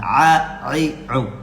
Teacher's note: Wasfal halqi, tengah-tengah tenggorokan. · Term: huruf ain